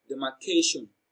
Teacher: the third syllable k receives the stress because it is pronounced louder and longer